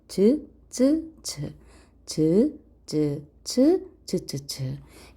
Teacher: 자, 그 다음에 센 입천장 소리 조금 더 뒤쪽에 입천장에 넓게 닿으면서 나는 소리